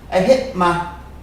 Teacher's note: That T sound disappears. I hit my, and that sounds like a MA sound, really.